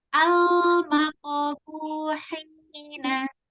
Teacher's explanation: Lam itu harus dialirkan suaranya, jadi tidak boleh dilepas ya, jadi tidak boleh al. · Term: lam sukun